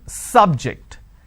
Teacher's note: Biology is an interesting subject. I'm stressing on the first syllable.